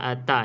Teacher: kena ada bunyi angin ta ta ni tapi jangan berlebihan sampai nak bunyi huruf Sin pula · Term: Hamas